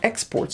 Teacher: when it's a noun the stress is on the first syllable exports